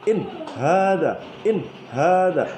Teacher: Ada nun sukun bertemu dengan ha. Dibaca terang dan jelas. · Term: idhar